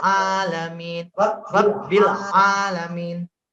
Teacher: jadi melebur antara lam dengan ainnya